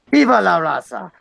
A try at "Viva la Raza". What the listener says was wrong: You gotta roll the R. Viva la Raza.